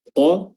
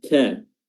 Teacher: satu qa tebal, satu ka ya tipis